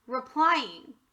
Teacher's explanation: the letter e here changed from a long e sound to an a sound we call that a schwa